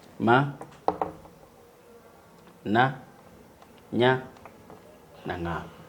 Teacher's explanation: sauti ambazo hutamkwa kwenye chemba cha pua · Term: ving'ong'o